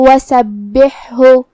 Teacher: یہاں با پہ تشدید ہے، لہذا دو حرف کے برابر ہم حرف البا کو پڑھیں گے. پھر یہاں حرف الحا ہے، ہا کو ہم حلق کے درمیان والے حصے سے ادا کریں گے، اور جو کہ اس پہ جزم ہے تو ہمیں ہا کو ظاہر کرنا ہے.